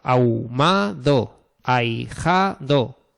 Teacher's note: Y la H no impide el diptongo, porque si tenemos una H intercalada, pues se hace igual porque la H es muda.